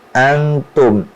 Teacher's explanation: Kemudian ada nahan dengung ikhfa, nun mati ketemu ta, antum itu harus ditahan.